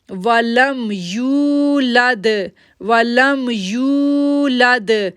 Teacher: اب دیکھیں لام کو دال کے ساتھ جوڑ رہے ہیں تو دال پہ جو ہے وہ کلکلا لیٹر ہے، دال جو ہے وہ کلکلا لیٹر ہے، وہاں پر ایکو ساؤنڈ بنتا ہے، اس لیے ہم بولیں گے لم یلد لم یلد ولم یولد ولم یولد. اب دیکھیں یو کو کھینچیں گے کیونکہ واو ساکن سے پہلے پیش ہے